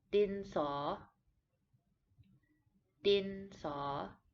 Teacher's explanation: The last part of the word, the saw, is a rising tone, as if you are asking a question.